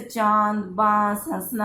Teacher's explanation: जैसे फलतः, प्रातः, दुख, अतः, पुनः आदि। अनुनासिक, मुख और नाक से बोले जाने वाले स्वर अनुनासिक स्वर होते हैं।